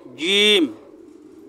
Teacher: জিহ্বার মধ্যখান থেকে একটু শক্ত করে বলবেন